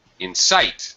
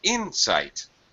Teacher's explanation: first one has second syllable stress the second word has first syllable